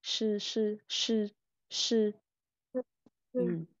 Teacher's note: Chữ SH thì mình không phải bật hơi. Mình chỉ cần nói bình thường thôi.